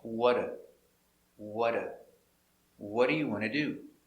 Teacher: the t is changed to a d between two vowels